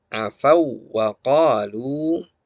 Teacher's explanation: Afau wa qalu. Ya, jadi wawnya ditekan saja, dipertegas tasydidnya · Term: idgham